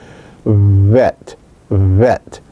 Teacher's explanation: the second letter is pronounced without a dog-ish as vet vet it is bilabial that is you use both lips it is fricative that is there is that sound of friction and it is voiced